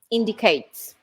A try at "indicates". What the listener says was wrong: I would put the word stress slightly differently. Indicates. That's it on the first syllable there. Indicates.